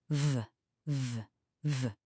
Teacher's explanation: instead of just air, we're going to turn on our voice box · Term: V sound